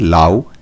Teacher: তেমনি অলাবু থেকে লাউ, এখানেও দেখো শব্দের আদিতে থাকা অ স্বরধ্বনিটি লোপ পেয়েছে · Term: আদি স্বরলোপ